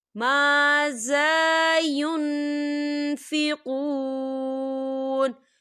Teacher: نون ساکن کی آواز کو ناک میں چھپائیں گے · وقف کی صورت میں نون ساکن ہو جائے گا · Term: اقفا